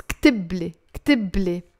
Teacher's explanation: In the masculine, it's not كتوب plus لي, you have to drop the wow. It's كتبلي, كتبلي, write for me.